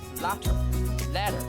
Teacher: Here the T sound is replaced by an alveolar flap. What's happening here is that one articulator is thrown against another in a single gesture, hence tap or flap.